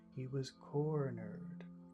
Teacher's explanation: He was is very small. Cornered is very big.